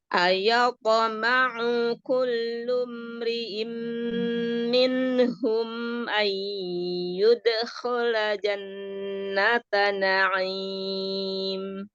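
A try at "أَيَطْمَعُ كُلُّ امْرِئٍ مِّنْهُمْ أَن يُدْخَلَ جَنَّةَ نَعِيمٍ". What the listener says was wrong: Ya, jangan ragu-ragu dal sukun. Qalqalah. Ayyud.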